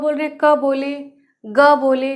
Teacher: तो बहुत कम मात्रा में श्वास वायु बाहर निकलती है और हम इसे बहुत जल्दी बोल ले रहे हैं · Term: अल्प्राण व्यंजन